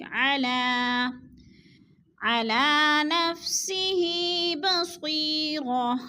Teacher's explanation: علی نفسہ بصیرہ، نفسہ کے نیچے کھڑی زیر ہے، کھڑی زیر کو ہم نے کھینچ کر پڑھنا ہے